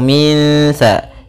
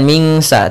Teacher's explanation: cara membacanya kita samarkan langsung ke huruf sa-nya. Min sa, as-sa, langsung min sa, bukan mingsa tapi min samarihi, sambil ditahan gunnahnya 2 harakat.